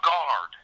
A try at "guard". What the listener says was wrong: A guard. Guard. He's drawing out the a longer than he should. It's pronounced Guard, not guard.